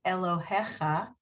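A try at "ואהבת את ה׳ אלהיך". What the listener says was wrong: No, look at the third word letter. It's not a het, it's a hey. No, just Elohe. It's an H. Elohecha. And a lot of you probably would make that a het, but it's not. It's a H. It's a hey.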